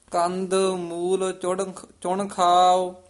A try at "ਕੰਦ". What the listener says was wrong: ਇਹਨੂੰ ਕੰਧ ਨਹੀਂ ਕਹਿ ਦੇਣਾ।